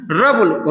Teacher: र में थोड़ा सा जीभ जो है सामने मुड़ रहा है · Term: मूर्धन्य